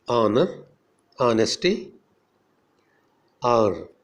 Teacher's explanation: H is silent in the beginning, as in honor, honesty, hour